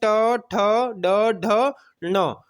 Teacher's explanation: ध्वनियां हैं जो मूर्धा के स्थान से उच्चरित होती हैं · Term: मूर्धन्य वर्ण